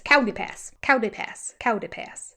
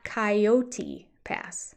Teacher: he takes coyote which is a three- syllable word and he breaks it down to a two- syllable word but it's not kot or that sound like Cody it's kaii